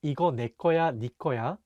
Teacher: 네 is sometimes pronounced ni in spoken Korean because it sounds very similar to 내